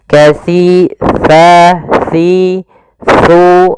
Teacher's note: Untuk menyempurnakan makhraj daripada huruf sa, kita harus mengetahui posisinya dulu, tempat keluar hurufnya, yaitu ada di mana ujung lidah kita menempel dengan gigi seri atas